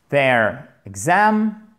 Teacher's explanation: On n'entend presque pas la première voyelle en fait.